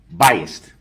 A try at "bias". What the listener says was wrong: No, bias, B-I-A-S. There's no T at the end. Bias.